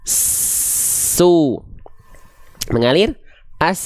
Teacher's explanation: Huruf sin kita alirkan nafasnya. Di saat yang sama telinga kita mendeteksi ada suara yang ikut mengalir. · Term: rokhwah